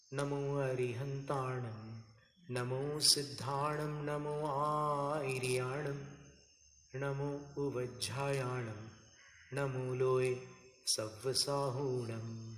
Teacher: तो आर्या का उच्चारण बहुत जटिल होता है, इसलिए यहाँ पर आपको आ में 2 मात्रा कर देना और री को रस्व बोलो